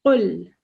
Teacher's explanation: it's a really strong قل and it comes from the back of your throat. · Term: qaf